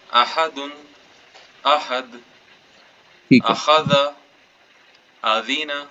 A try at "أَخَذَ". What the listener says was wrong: अखाज़ा पे वक्फ भी तो करना है ना।